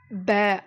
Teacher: அப்ப எதுவுமே இல்லாம இருந்துச்சுன்னா எப்படி சொல்லணும்னா ப அப்படின்னு இரண்டு உதடுகளையும் ஒட்டி ப அப்படின்னு நம்ம சொல்லணும்